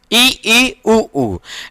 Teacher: जब हम ई उ जब बोलते हैं तो मुख जो है लगभग बंद ही रहता है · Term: समृद्ध